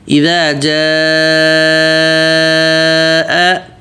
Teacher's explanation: یہاں پہ مد متصل ہوگا، جس کو کم از کم 4-5 الف مد کھینچیں گے۔ 4-5 الف مد کا مطلب ہے کہ جتنی دیر ایک انگلی کھولنے میں، دوسری انگلی کھولنے میں، تیسری انگلی، چوتھی انگلی کھولنے میں ٹائم لگتا ہے، اتنی دیر تک کھینچیں گے۔